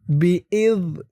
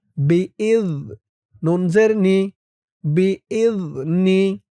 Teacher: বা জের বি, হামজা জাল জের ইজ, বি ইজ। জালের উচ্চারণটা একদম নরম হবে, জিহ্বার মাথা উপরের দাঁতের মাথার সাথে লাগবে।